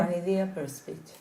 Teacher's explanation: One idea, we put it together, it's a liaison because the first one ends in a vowel, the second begins in a vowel.